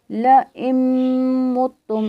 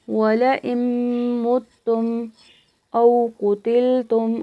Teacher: اب یہاں پہ حمزہ ہے، اس حمزہ کو ہم نے نون کے ساتھ ملانا ہے، یہاں پہ نون کا ادغام ہو گیا ہے، یعنی نون کو ہم نے میم میں داخل کر دیا ہے اور حمزہ کو ہم نے اس کے ساتھ ملانا ہے.